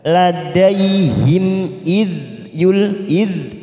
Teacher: huruf dzal bukan qalqalah maka kita tahan jangan sampai memantul